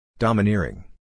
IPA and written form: ˌdɑː.məˈnɪr.ɪŋ (Domineering)